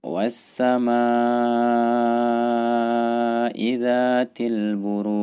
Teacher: kemudian disini pada ayat yang pertama diakhiri oleh huruf Jim dan huruf Jim adalah salah satu dari huruf Qalqalah maka ia harus memiliki pantulan suara ketika kita wakaf atau berhenti